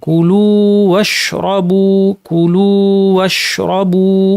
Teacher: এখানে ইদগাম করা যাবে না, বরং এটা মাদ করে টেনে তারপরে ওয়াশরাবু পড়তে হবে। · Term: মাদ্দের ওয়াও